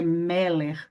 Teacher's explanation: A sílaba tônica está no primeiro E.